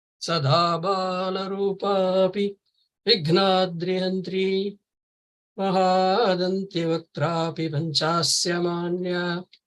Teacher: It has got 12 syllables in each line, arranged in the formation short, long, long, short, long, long, short, long, long, short, long, long.